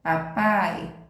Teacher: o som sai totalmente pela boca então oral